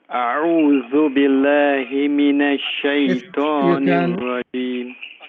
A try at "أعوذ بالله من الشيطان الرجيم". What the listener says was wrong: If you can take more time on the lam, which is billahi, because of the shadda. A'udhu billahi, billahi.